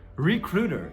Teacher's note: esse T no inglês americano, ele vira o flap T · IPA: /rɪˈkruː.tɚ/